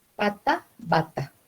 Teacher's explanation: el punto y modo de articulación es el mismo. Solo lo que varía es la sonoridad.